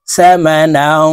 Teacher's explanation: তানুইনের পরে ইকফার হরফ কফ আসছে তাই এই নুনকে নাকের ভিতরে লুকাইয়া গুন্নার সহিত পড়বো